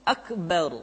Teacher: huruf ro mesti dibaca tafkhim atau dibaca dengan suara yang tebal